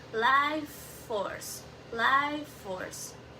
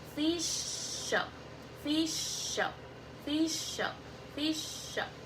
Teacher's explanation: The first word ends with a sound and the next word begins with the same sound. So instead of repeating the sound twice, we pronounce it as a longer sound